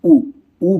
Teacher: उ भी ओठ से ही बोला जाता है